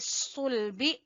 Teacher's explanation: स्वाद को पुर पढ़ेंगे, हरूफ मुस्तालिया में से है